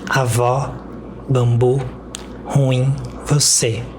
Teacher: a última sílaba dessas palavras é pronunciada com mais força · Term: palavras oxítonas